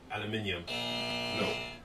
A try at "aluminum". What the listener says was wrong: That'd be aluminum, sir. That's right, aluminum. There's no extra I. Aluminum. A-L-U-M-I-N-U-M.